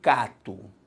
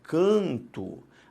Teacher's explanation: o som é diferente por uma nasalização e não pela entrada de um novo fonema · o que aconteceu foi simplesmente a nasalização da vogal a